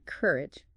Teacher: Stress on the first syllable sounds like courage, not cur e.